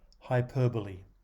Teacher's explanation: There is a tendency to take the prefix hyper as a unit before starting the new one, and the BOLE part looks like a single syllable. In fact, the stress is on the second syllable of this four-syllable word, hyperbole.